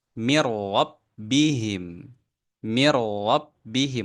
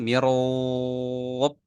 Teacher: langsung lewatkan huruf nunnya masuk ke huruf ro